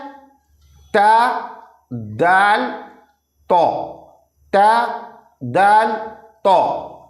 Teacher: ज़बान की नोक और ऊपर के दांतों की जड़ को लगने से ता दाल तो अदा होते हैं